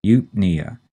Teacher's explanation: We put the stress on the second syllable, knee, eupnea.